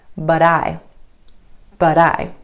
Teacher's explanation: Instead of that true T at the end of the word but, try the flap T.